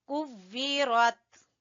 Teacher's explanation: اذا الشمس کویرت، تا ہے، ٹھیک ہے؟ کلکلا نہیں ہونا چاہیے